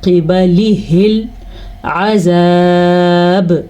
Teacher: حق ادا ہوگا، وقت کی وجہ سے با ساکن ہو گیا، ساکن با کی وجہ سے یہاں پہ کلکلا ہوگا اور جس کو ہم جھٹکے کی کیفیت کہتے ہیں